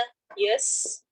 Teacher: سین سیٹی والا حرف ہے